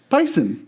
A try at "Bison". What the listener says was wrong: It's Bison. Yeah, it's with a Z. It's just it's like the opposite of Boise and Boise.